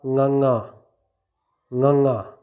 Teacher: ਬਿਲਕੁਲ ਸਿੰਪਲ ਜਿਹੇ ਤਰੀਕੇ ਦੇ ਨਾਲ, ਜਿਵੇਂ ਆਪਾਂ ਕੱਕਾ ਬੋਲਦੇ ਹਾਂ, ਖੱਖਾ ਬੋਲਦੇ ਹਾਂ, ਗੱਗਾ ਬੋਲਦੇ ਹਾਂ, ਘੱਗਾ ਬੋਲਦੇ ਹਾਂ, ਇਸੇ ਤਰ੍ਹਾਂ ঙ ਬੋਲਿਆ ਜਾਵੇਗਾ। ਬਸ ਸਿਰਫ ਨੱਕ ਦੇ ਰਾਹੀਂ ਆਵਾਜ਼ ਬਾਹਰ ਕੱਢਣੀ ਹੈ। ਅਨੁਨਾਸਕੀ ਅੱਖਰ ਹਨ ਇਹ ਦੋਵੇਂ।